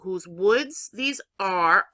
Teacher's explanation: you see how my voice going up with woods that's a stress